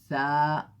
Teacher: جب یہ حرف پڑھتے ہیں تو تھوڑی سی جو زبان ہے وہ دانتوں کے باہر تھوڑا سا نکالنا پڑتا ہے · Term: حرف الثاء